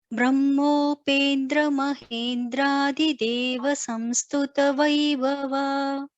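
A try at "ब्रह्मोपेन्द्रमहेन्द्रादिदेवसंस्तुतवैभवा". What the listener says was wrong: And in Brahma, Ha should also be heard clearly. In the second line, Brahmopendra. Brahmopendra. Yeah, when you're splitting, you're chanting it. When you're combining Brahmopendra, you are missing that Hakara. Brahmopendra. Can practice that.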